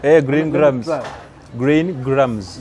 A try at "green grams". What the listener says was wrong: Then we try without sounding so aggressive. Green grams. Green grams.